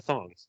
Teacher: everybody says the S with a th sound